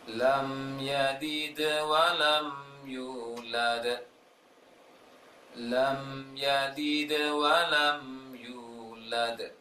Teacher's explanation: dia memantul, akan tetapi pantulannya tidak memutus suara kita antara huruf sebelum huruf dal tersebut dengan huruf waw setelah huruf dal. Dia memantul, akan tetapi tidak putus suaranya. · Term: pantulan kecil